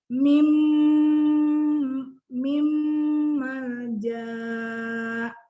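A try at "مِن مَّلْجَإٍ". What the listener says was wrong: Enggak, jimnya enggak 2 harokat, ini jim. Yang ini tempat berdirinya hamzah. Masih panjang jimnya.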